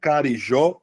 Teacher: peraí, pontapé tem como final, tem a sílaba tônica no final, Carijó tem a sílaba tônica no final